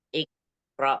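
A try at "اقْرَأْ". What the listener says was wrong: Nah, itu yang khalaqa-nya bagus yang, tapi yang iqa kurang qalqalahnya. Iqra, iqra.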